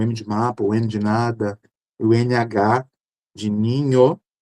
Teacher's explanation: são sons ali nasais que sai ali pelo nariz e pela boca. Claro que por força da vogal, né?